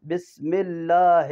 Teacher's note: بسم اللہ، لفظ اللہ سے پہلے با کے نیچے زیر ہے تو باللہ کیسے ہو گیا؟ یہ لفظ اللہ یا اللہم سے پہلے اگر زیر ہو تو یہ دونوں لام باریک ہوتے ہیں